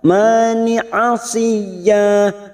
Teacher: masuk pada huruf ya yang bertasdid dulu, hanya masuk tanpa mendengung, tanpa ditahan lama-lama. Asiyya, ya-nya kita panjangkan 2 harokat karena ada fathatain yang dibaca waqaf namanya mat iwad, cabang dari mat tabi'i, 2 harokat kita panjangkan.